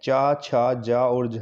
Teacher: चा, छा, जा, झा ये सब के सब तालव्य व्यंजन होते हैं